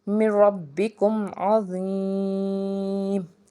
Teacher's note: मीम साकिन है उसके बाद आइन है तो यहाँ पे इजहार शफ़वी होगा, यहाँ पे गुन्ना नहीं होगा।